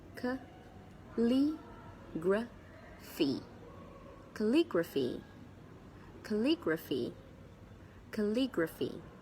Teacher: There are 4 syllables, and of course, the stress is on the second syllable.